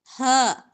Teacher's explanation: یہ والا جو ہا ہے دو آنکھوں والا ہا، یہ حلق کے آخری حصے سے ادا ہوگا، اقصی حلق سے